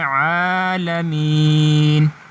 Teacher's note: آگے ہے عالمین، اب عین کے اوپر کھڑی زبر ہے اور یہ کھڑی زبر اس کو ایک الف کی مقدار کھینچ کر پڑھنا ہے۔